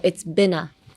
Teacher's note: So, uh, connect the been and a